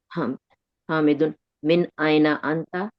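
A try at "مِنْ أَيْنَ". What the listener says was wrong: मिन ऐना है, ये मन नहीं है, ठीक है? मिन ऐना।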